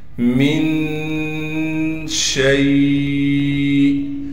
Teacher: نون پر اخفا یعنی غنہ کریں گے